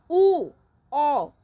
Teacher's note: মুখটা বন্ধ হয়ে গেছে, ঠোঁট দুইটা গোলাকার হয়ে গেছে, ওইগুলিকে বলা হয় কুঞ্চিত স্বরধ্বনি